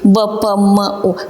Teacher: Ерніңіздер не қылып тұрды? Екі ерніңіз жабысып, қос ерінлік деген атына сай болып айтылып тұрды.